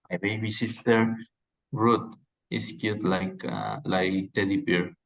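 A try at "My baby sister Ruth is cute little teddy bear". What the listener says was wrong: There's no there was no like. My baby sister Ruth is cute little teddy bear. Metaphor, yeah. They're not saying she's like a teddy bear. They're saying she is a teddy bear.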